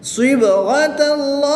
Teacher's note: اس میں اللہ عز و جل کے لام سے پہلے زبر ہے تو اس لام کو پوری یعنی موٹا پڑھیں گے. وقف کی حالت میں یہاں پر مد عارض ہوگی، 2 سے 3 الف تک کھینچ کر پڑھیں گے